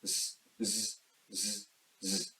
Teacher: ‘z’ does require vibration on vocal cords so it is voiced sound